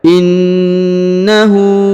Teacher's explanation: Perhatikan huruf na ditahan dan ditekan ya karena terdapat tanda tasdid. Lalu huruf hu dipanjangkan 2 harokat karena berharokat u terbalik ya.